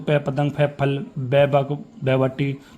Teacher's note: इनमें जो आपके होठ है वो बंद होते हैं दंत खुलते हैं यानी होठ की मदद से ही ये इनका शब्द का उच्चारण हो सकता है। · बिना होठों को मिलाए हुए आप पे को उच्चारण नहीं कर सकते हो।